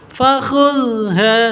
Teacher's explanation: zal tidak boleh ditawalludkan atau tidak boleh dipantulkan